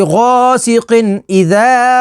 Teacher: تنوین کے بعد حروف حلقی ہے تو یہاں پر اظہار ہوگا یعنی غنہ نہیں کریں گے. ذال الف زبر ذا، اذا.